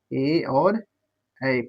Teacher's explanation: कंठ और तालु से मिला मिलाकर बोलते हैं